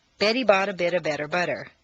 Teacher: an unstressed T in the middle of a staircase between two vowel sounds should be pronounced as a soft d